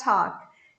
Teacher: This final K sound will be a stop K. Formo, mas não solto.